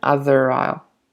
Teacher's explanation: the R has to be pronounced both in British and American English because there's a vowel after